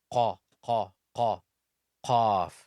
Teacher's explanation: Qaf is a heavy letter. It's like you're squeezing the upper portion of your throat together and ejecting the sound of qaf.